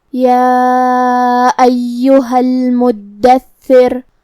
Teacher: کلمت المدثر میں یہاں حرف الدال پہ تشدید ہے اور ثا پہ بھی تشدید ہے لہذا ہم یہ دونوں حرف کو تشدید سے ادا کریں گے. حرف الثا کی ادائیگی زبان کے سر اور اوپر والے دانتوں کے اندرونی کناروں سے ہے · آخری میں ہم حرف الرا پہ رکیں گے تو اس پہ جزم سے رکیں گے. تو یہاں را کا حکم ہے ترقیق، مطلب ہم را کو پتلی آواز میں پڑھیں گے کیونکہ اس پہ ہوگا جزم لیکن اس سے پہلے والے حرف پہ مطلب تھا کے نیچے زیر.